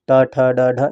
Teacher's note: ट वर्ग के जितने भी व्यंजन आते हैं वह सब क्या आते हैं मूर्धा में आते हैं